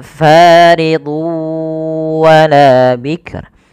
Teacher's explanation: Kita lihat di sini faridun wala, bukan lagi faridun wala, tapi tanwinnya masuk ke waw dan ini kita baca dengan bacaan idgham bi gunnah